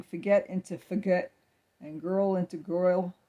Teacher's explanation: speakers often dropping r's that are followed by another consonant